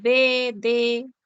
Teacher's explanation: modo oclusivo se produce cuando al momento de articular el sonido el aire encuentra una obstrucción total es decir hay un cierre total en alguna parte de la cavidad bucal Y luego el sonido sale como si fuese una explosión Así